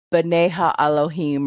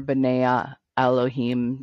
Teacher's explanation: the ha sound is not always used. It's kind of swallowed up sometimes. Kind of like dropping off.